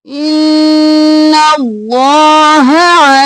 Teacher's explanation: अल्लाह का लफ्ज़ मोटा, हा जल्दी से